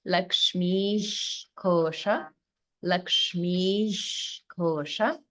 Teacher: So holding after dirgha, and the holding is on the ish sound of visarga.